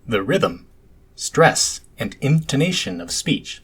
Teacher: I was prosodically emphasizing the terms rhythm, stress, and intonation. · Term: prosodic emphasis